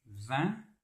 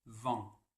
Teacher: un, on a les lèvres qui sont étirées en arrière, comme si on voulait sourire. Et en, on a une position des lèvres qui est neutre. On a les lèvres en avant.